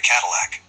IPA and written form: ˈkædɪlæk (Cadillac)